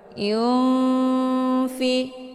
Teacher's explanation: Yunfi, ada nun sukun bertemu dengan huruf fa, dinamakan dengan hukum ikhfa awsat. Cara bacanya, nunnya disamarkan kemudian siap-siap menuju ke huruf fa. Yunfi, jadi nun ini ibaratnya seperti bacaan yang digantung.